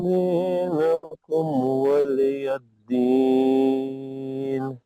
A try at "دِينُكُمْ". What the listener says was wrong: दीनुकुम पेश को अच्छा पढ़ो.